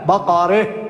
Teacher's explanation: هو على المذهب الإجمالي يقف عليها بالإمالة